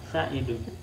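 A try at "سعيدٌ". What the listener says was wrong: Sa'idun. Ainnya panjang. Sa'idun.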